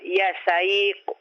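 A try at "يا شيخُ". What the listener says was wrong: Ya Syekhu. Mana itu kha. Kha. Ikuti saya. Kha. Khu. Ya Syekhu.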